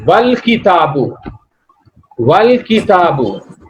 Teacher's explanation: Hamza of wal kitabu will not be pronounced because Hamza is preceded by wa, and wa will directly meet lam. Wa has to meet lam and you will pronounce it wal kitabu.